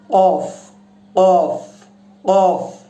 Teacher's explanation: এই কফ যেটা, এটা উচ্চারণ করতে হবে জিহ্বার শেষ অংশ থেকে।